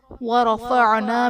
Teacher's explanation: را پر زبر ہے، را کو پر پڑھا جائے گا